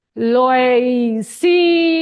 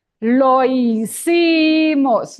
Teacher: The H is not sounding